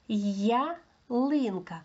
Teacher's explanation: якщо я стоїть попереду, воно, е, позначає два звуки й а.